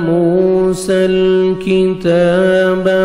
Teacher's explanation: وَإِذْ آتَيْنَا مُوسَى الْكِتَابَ، واو مدہ، واو جزم سے پہلے پیش ہے، 1 سیکنڈ میم کو کھینچیں گے، سین کو لام کے ساتھ ملانا ہے اور لام کو آپ نے ہلانا نہیں ہے